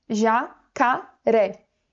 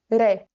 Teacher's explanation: a sílaba tônica, ela é a última sílaba, não é a antepenúltima. Então, essa palavra aqui, na verdade, ela é uma oxítona.